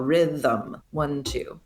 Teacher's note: And the thum syllable has a schwa vowel. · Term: hidden vowel